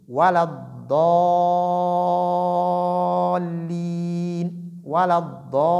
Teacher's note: le mad, la prolongation ne sort pas du nez